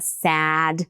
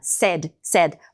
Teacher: O sad a vogal é mais longa, a boca tá mais aberta. Sad, mesma vogal de Apple Cat. E o said é o e de Eva.